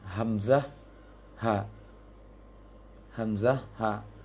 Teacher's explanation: tenggorokan paling dalam yang dekat ke dada